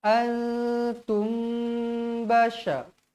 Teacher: bibir kita boleh dirapatkan dengan kadar dua harakat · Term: Ikhfa Syafawi